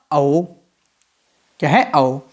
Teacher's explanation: ओ और औ का उच्चारण स्थान कंठ और ओष्ठ दोनों के सहयोग से होता है। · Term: कंठ ओष्ठ स्वर